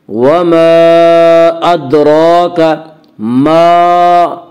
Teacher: وما ادراک ما، الف مدہ، الف میں شا مدہ ہوتا ہے، الف سے پہلے ہمیشہ زبر ہوتا ہے، الف مدہ کو 1 الف کے برابر کھینچ کر پڑھیں گے۔